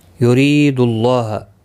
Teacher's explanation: را زیر کی وجہ سے باریک پڑا جائے گا۔ ری یا مدہ بھی ہے، ایک الف کی مقدار کے برابر کھینچ کر پڑھیں گے۔